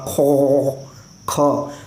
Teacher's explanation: जो हलक का ऊपर वाला हिस्सा है वहाँ से खौ निकलता ही है